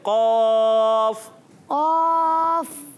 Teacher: जबान की जड़ और तालू के नर्म हिस्से से कौफ अदा होता है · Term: काफ का मखरज